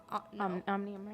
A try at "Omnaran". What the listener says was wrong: Omnaran. Omnaran, right here. actually an O, but it looks like a U. It's Omnaran.